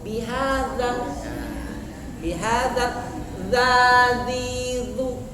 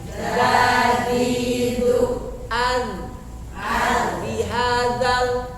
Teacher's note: Bihazal lembut ke zal. Ujung lidah ke ujung gigi atas.